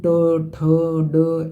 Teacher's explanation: जैसे आप बोलेंगे ना ट, तो आपका जीभ इसमें मुड़ती है, मतलब है ना, तो ट ठ ड ऐसे बोलेंगे, तो यानी पूरा ट वर्ग जो है ये आपका मूर्धन्य में आएगा।